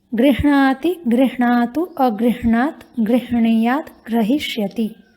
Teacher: गृह्णाति में पहले हकार है, उसके बाद णकार है।